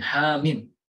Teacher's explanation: Ha kita tidak baca panjang 6 harokat, tetapi hanya 2 harokat. Sedangkan mimnya kita panjangkan 6 harokat.